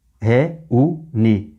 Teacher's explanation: Feito em reunir também, né? Você tornou o réu, que é ditongo, em hiato.